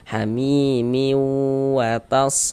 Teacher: Bunyi tanwinnya dimasukkan ke huruf waw sehingga dibaca miwatas seperti itu. Kemudian di bagian miunya itu suaranya itu kita tahan, kita panjangkan sejenak kira-kira sepanjang 2 harokat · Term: gunnah